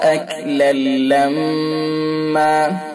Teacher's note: ادغام تام بلا غنہ، یعنی اس کے اندر غنہ نہیں ہوتا. اکلن لما ہے اصل، لیکن ہم نے ادغام کیا تنوین کا لام میں تو اکلن لما ہو گیا.